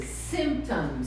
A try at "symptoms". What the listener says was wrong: Tem que pronunciar o P. Symptoms.